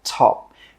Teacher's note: with that final P sound, we stop the air from coming out and we just say 'top'.